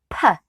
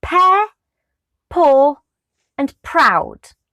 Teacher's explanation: So the sound P is a unvoiced and consonant sound. It's also known as a bilabial stop.